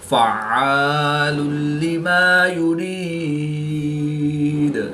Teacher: دو پیش کی تنوین کے بعد لام حروف ارملون میں سے ہے تو یہاں پر ادغام بلا غنہ ہوگا، یعنی کہ بغیر غنہ کے ادغام کر کے پڑھیں گے۔